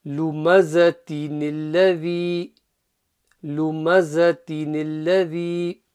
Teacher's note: it should be no gap in the middle in your recitation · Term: joining noon